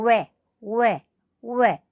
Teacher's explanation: दंतौष्ठ यानी दांत और ओष्ठों के द्वारा, होठों के द्वारा इसका उच्चारण स्थान होगा। एक मात्रा अकेला ऐसा है जो वकारस्य दंतोष्ठम, दांत से और ओष्ठों से इसका उच्चारण होता है, ठीक है।